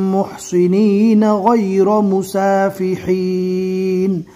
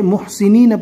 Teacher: صاد کو اچھے سے پور پڑھنا ہے